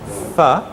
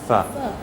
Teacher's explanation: you have to put your bottom lip between your teeth and you have to make a fricative, okay? And no voice.